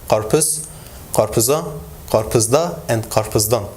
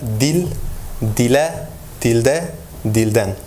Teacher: while in standard Turkish we have like rounding harmony and backness harmony, in Şanlıurfa dialect, we only have backness harmony